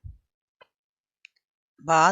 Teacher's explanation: बा दोनों होठों के तर वाला हिस्सा से अदा होता है